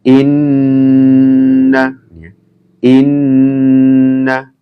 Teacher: Inna, mendengung ya, ditahan